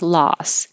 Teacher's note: loss with an ah and an s